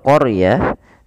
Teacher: huruf r-nya ditebalkan karena huruf ro yang didahului dengan huruf fathah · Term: ro tafim